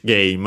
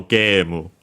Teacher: And so yeah, just like in English, game. And so game, high, low, low.